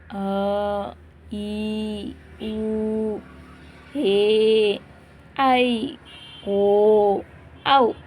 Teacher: ದೀರ್ಘಸ್ವರ ಅಂದ್ರೆ ಏನು ಎರಡು ಮಾತ್ರಾ ಕಾಲದಲ್ಲಿ ಉಚ್ಚರಿಸಲ್ಪಡುವ ಅಕ್ಷರಗಳು